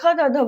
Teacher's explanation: बोलने पे आपका जो जीभ जो है वो दांत से चिपकता है, सटता है हल्का सा। आप देखिए उच्चारण करके, त बोलने से क्या है, हमारा जीभ जो है दांत से सट रहा है, तो त वर्ग।